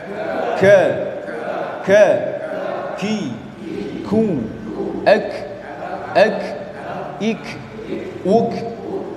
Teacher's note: Tempat keluarnya huruf kaf adalah, ya, lidah paling belakang ditemukan dengan langit-langit berdaging dan bertulang, ya. Artinya maju sedikit dari makhrajnya huruf qaf, disertai sifat hamz ke.